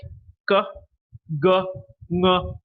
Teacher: When the back of the tongue comes close to the velum or the soft palate, we get velar sounds in RP